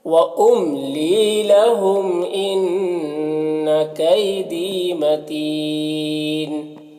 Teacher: دی میں جو یا ہے یہ یا مدہ ہے، اسے ایک الف کے برابر کھینچیں گے